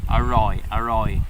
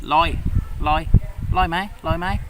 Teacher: In Southern Thai, they cut out the first bit and they just say loi, loi, loi mai, loi mai.